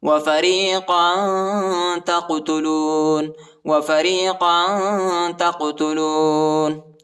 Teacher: تا کو قاف کے ساتھ ملائیں گے، قاف کو جھٹکے کے ساتھ پڑھیں گے